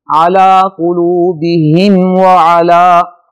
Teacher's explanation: علی قلوبہم وعلی، میم ساکن کے بعد واو آ رہا ہے جو نہ حروف نہ تو اس میں میم کے بعد میم ہے اور نہ ہی میم کے بعد با ہے، اس کے علاوہ ہے، لہذا میم کو ظاہر کر کے پڑھیں گے، یہاں میم پر غنہ نہیں ہوگا